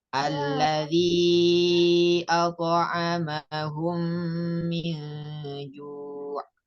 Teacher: Jadi at'amahum memantul, tapi pantulannya tidak keras. Tidak terlalu kentara ya. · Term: kolkolah sughro